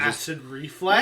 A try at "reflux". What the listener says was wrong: Yes, reflux, dumbass. Not reflex, reflux, flux, dumbass. Say it, flux. Say it, flux. No, say it, flux.